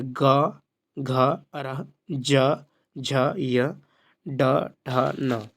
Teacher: जिन व्यंजन के उच्चारण में स्वर तंत्रियों में कंपन हो वह घोष व्यंजन कहलाता है।